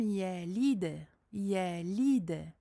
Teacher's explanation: Une qalqala en plein milieu d'un verset. Et c'est une qalqala soghra, soghra, c'est-à-dire une petite qalqala. Elle ne sera pas exagérée, entre guillemets, comme la qalqala de fin de verset.